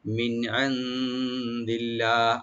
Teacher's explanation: আর লফজ জালাল এখানে আমরা লাইট করে পড়ব